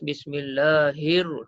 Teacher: Apabila kita baca daripada Bismillahi, kita tak bunyikan hamzah wasal ni. Kita terus pergi ke huruf selepasnya iaitu huruf lam.